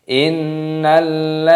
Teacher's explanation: Innalladzina, dalnya matobi'i ada ya sukun, dipanjangkan dua ketukan